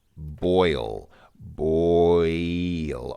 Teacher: Obviously, there's obviously two sounds there. There's two vowels that come together, and they form an obvious transition between their two vowel sounds in the middle of the word. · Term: diphthong